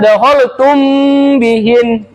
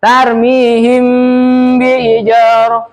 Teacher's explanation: samarkan antara mim dan ba terdengar seperti didengungdengungkan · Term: ifa syafawi